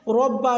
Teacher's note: ربا میں را کو پر یعنی کہ موٹا پڑھا جائے گا کیونکہ را پہ زبر ہے۔